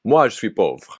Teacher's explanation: The vowel in je is unstressed, and both the j in je and the s in suis are fricatives pronounced very close to the same place in the mouth.